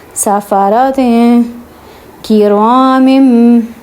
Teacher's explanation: اب یہاں پہ اخفا ہوگا کیونکہ دو زیر کے بعد آگے کاف آ رہا ہے، جو کاف جو ہے وہ حروف اخفا میں سے ہے، تو سَفَرَةٍ پڑھیں گے، ٹھیک ہے۔